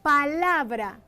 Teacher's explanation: La sílaba tónica de esta palabra es la, porque en ella se hace más fuerza al pronunciarse dicha palabra, la. Las demás sílabas son sílabas átonas, sílabas átona, ya que en estas no se pronuncia con tanta fuerza las vocales que aparecen en las mismas.